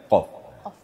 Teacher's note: Nah, kalau ko makhrajnya adalah ee di ujung ee tenggorokan ujung atas ko. Tapi kalau qof itu di pangkal lidah. Diangkat pangkal lidah. Maka kedengaran qaf qf.